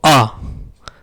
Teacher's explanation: जब हम आ बोलते हैं तो देखो न जीभ हमारी आगे गई न पीछे गई, आ बीचों बीच रही। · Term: मध्य स्वर